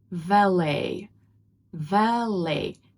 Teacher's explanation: The stress is at the end and the t is not pronounced.